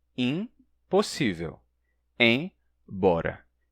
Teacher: não há um toque bilabial real no M, mas dá para dizer que ele é escrito como um prenúncio da articulação bilabial que está prestes a acontecer no P ou no B que vem depois.